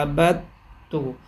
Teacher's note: عین زبر ع با دال زبر بد عبد تا پیش تو عبد تو، دال کا تا میں ادغام کر دیا